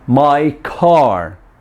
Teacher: vowel ya to the stop sound or stop consonant C so the C Sound in the linked words my car has a lot of puff of air